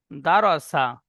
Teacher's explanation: রটি উচ্চারণ করার সময় ঠোঁট দুটি গোল আকৃতি হবে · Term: র পুর